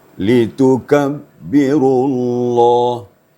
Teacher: Jadi lebih di depan makhraj kaf lebih di depan daripada qaf.